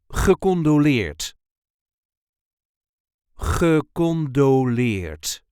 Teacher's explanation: there is a light emphasis on the last syllable